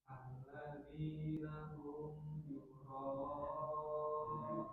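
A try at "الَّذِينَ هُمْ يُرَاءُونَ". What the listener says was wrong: Coba roknya tebalkan lagi. Yura'un.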